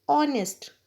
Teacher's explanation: So opening sound of honest is O. Here H is silent.